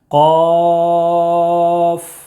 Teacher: قاف میں مد لازم حرفی مخفف ہوگا، 3 الف یا 5 الف کے برابر کھینچ کر پڑھیں گے،